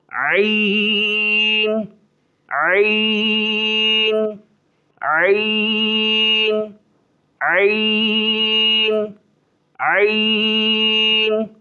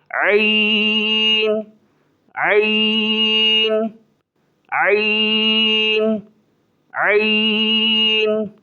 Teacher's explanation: ایک الف سے زیادہ کھینچیں گے، ایک مد کے برابر، اور اس کو تھوڑا زور لگا کر پڑھیں گے